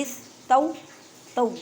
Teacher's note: واو ساکن سے پہلے زبر ہے تو واولین کا قاعدہ کریں